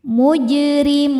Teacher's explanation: Huruf ra dibaca tarqiq karena harokatnya kasrah. Cara bacanya tipis. Mun jika berhenti hukumnya mad arid li sukun karena mad tabi'i bertemu dengan huruf yang disukunkan karena waqaf.